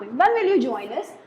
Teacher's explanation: So this is the rising intonation. आपकी pitch high होगी.